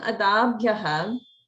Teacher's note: So notice in Adabhyaha, there's holding after dirgha, and not only that, but it's a dirgha swarita. So it's a even doubled dirgha.